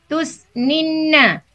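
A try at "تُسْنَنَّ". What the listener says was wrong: Bukan. Terus fathah ain fiilnya. Ain fiilnya fathah Ibu, bukan kasrah. Ibu tadi bilang tusninna. Nah, salah nih.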